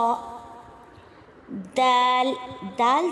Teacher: زبان کی نوک جب اوپر کے دانتوں کی جڑ یعنی کہ ثنایا علیہ کے دانتوں کی جڑ سے ٹکرائے گی تو وہاں سے دال ادا ہوگا اور تا بھی وہیں سے ادا ہوگا۔